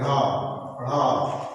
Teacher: मूर्धा का स्पर्श करेंगे और तुरंत नीचे गिरेंगे · जीभ का आगे का भाग या अग्रभाग मूर्धा के स्पर्श करके झटके के साथ नीचे गिरता है उत्क्षिप्त व्यंजन कहलाते हैं।